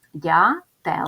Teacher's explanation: іще увагу що треба писати букву Е запишемо транскрипцію цього слова перший приголосний звук дзь м'який тому що далі іде буква я яка пом'якшує цей звук а- голосний звук т - твердий приголосний е голосний звук л